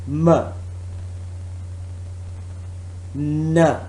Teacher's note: complete closure in the mouth and then air escapes through nose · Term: nasal